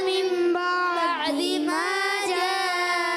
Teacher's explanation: نون ساکن تنوین کے بعد تو اس کو میم سے بدل کر اخفا کر کے پڑھتے ہیں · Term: اقلاب